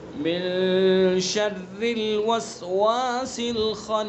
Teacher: یعنی ناک کے باسے سے ادا کریں گے ایک الف کے برابر، من شر، شر کی را کو باریک پڑھیں گے، شرل نہیں پڑھیں گے اس کو، بہت سے اس کو شرل پڑھ دیتے ہیں، من شرل، تو شرل نہیں پڑھنا، من شرل، من شر الوسواس الخناس، ٹھیک ہے؟ خناس کے نون میں بھی غنہ کریں گے اور خا کو اس کے مخرج سے نکالیں گے اور پر کر کے پڑھیں گے